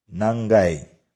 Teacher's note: konsonan G di tengah kata dan sebagai kata bantu ga diucapkan eng